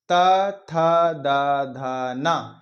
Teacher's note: इनका जो भी है यह हमारे दांतों के पिछले हिस्से से टकराए